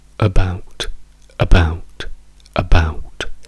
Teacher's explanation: dove vediamo che l'accento della parola è sulla seconda sillaba bout, bout